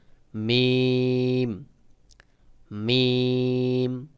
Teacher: মিম দুই ঠোঁটের শুকনা অংশ হইতে উচ্চারণ হয় একটু চাপ দিয়ে দুই ঠোঁটের শুকনা অংশ একটু চাপ দিয়ে উচ্চারণ করবেন